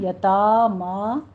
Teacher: واللام کو سٹاپ کرنا ہے، حرکت نہیں دینی، یتامہ نہیں کہنا، یتاما فتح قائمہ 2 کاؤنٹ کریں گے